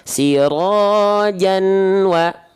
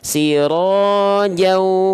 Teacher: Bunyian di sini pada fathatain an menjadi au ke bunyi wawunya. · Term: idgham